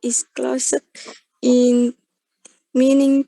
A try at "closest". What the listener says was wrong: Oke, let me correct your pronunciation ya. You should say closest, bukan closet. Kalau closet jadinya closet nanti ya. Oke, closest ada S-nya di sini ya.